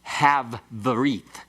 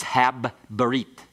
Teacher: it's the hard sound of the bagad kafath letter that is doubled. So it's not have berit, it's hab berit.